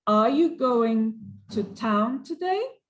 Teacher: when i ask a question my voice goes up at the end of the sentence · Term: intonation